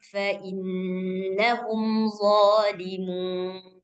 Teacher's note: Dia punya sifat itbaq, dia punya sifat isti'la. Jadi dia punya 2 sifat yang tebal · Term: huruf dha